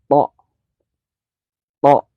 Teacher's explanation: Itu ujung atas, termasuknya ujung atas nempel ke gigi atas yang seri, yang di depannya nempel.